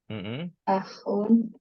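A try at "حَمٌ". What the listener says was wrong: Amun enggak ya? Ha ya. Pakai ha. Bukan pakai ain. Hamun.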